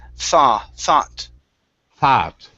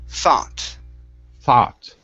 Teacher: Make sure to pronounce an ah sound here and pronounce the t.